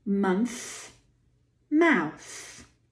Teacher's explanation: Both of these words have voiceless TH. Bite the tongue and squeeze the air.